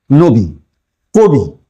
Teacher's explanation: কবি একটা শব্দ আর নবী একটা শব্দ। এখানে যে ই আর এখানে যে দীর্ঘই এই দুটোর উচ্চারণ কিন্তু একরকম। আমরা কখনো এই বানানের ক্ষেত্রে ইটাকে দীর্ঘ করছি না।